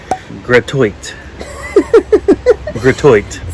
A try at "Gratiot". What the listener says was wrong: So it's not gratuit. It's actually pronounced GRATIOT. Like, I'm gonna grash it. Like smash, but grash. I'm gonna grash it. So GRATIOT Avenue.